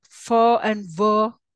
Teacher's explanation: labio dental with lower lip and upper teeth